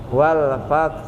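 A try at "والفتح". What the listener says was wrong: Coba sukunnya hak Pak. Nah gitu. Itu kayak hak terbuka itu malah pala. Harusnya diem aja.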